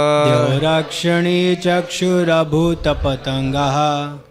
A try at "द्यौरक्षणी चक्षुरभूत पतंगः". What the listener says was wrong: अभूतो नहीं अभूत पतंगः ना, ध्यान से बोलिए। द्यौरा नहीं है, द्यौर। द्यौरक्षणी चक्षुरभूत पतंगः,